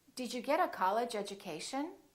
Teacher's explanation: And when the D is followed by a U, it becomes Jew.